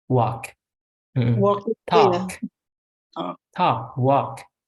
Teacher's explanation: Walk itu nggak ada L-nya ya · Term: silent L